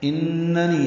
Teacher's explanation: اننی نون مشدد پہ غنہ ہے اور نی یائے مدہ ہے، 2 حرکات لمبا کریں گے